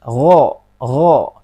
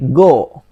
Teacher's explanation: Huruf ghain berada di ujung tenggorokan kita.